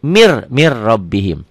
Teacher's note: sini Mir mirrobbihim tulisannya Min rabbihim dibacanya mirrobim ini idgham bilagunnah idgham tanpa dengung tanpa ditahan